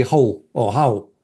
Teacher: the R by this point in time is not pronounced anymore